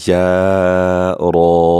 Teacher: یا کو بھی ہم باریکی سے پڑھیں گے اور را کو پر کر کے پڑھیں گے